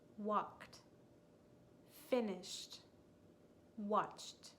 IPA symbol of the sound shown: t